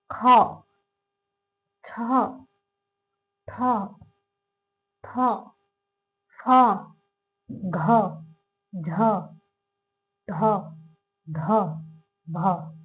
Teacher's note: इनको बोलते टाइम हमें ह का उच्चारण महसूस होगा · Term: महाप्राण